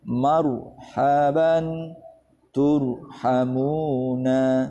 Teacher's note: Berikutnya, ro sukun didahului fathah atau dhammah. Ro sukun didahului fathah atau dhammah. Ini juga dibaca tafkhim.